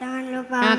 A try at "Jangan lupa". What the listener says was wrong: Kurang. Nadanya di tinggi, yuk.